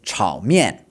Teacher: Third tone, then fourth tone, and slightly different pronunciation.